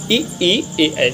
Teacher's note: इसमें अग्र स्वर की बात करें तो ई और ए ऐ होते हैं